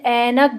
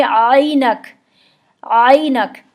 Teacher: उर्दू में जो हम आइन पढ़ते हैं वो बिल्कुल हमज़ा की तरह पढ़ते हैं, हम आ पढ़ते हैं, जैसे आइन से ऐनक बोलते हैं हम।